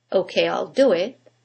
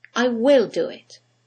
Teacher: when we use the contraction there is no stress on the contracted form